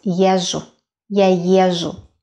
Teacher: З is almost not pronounced.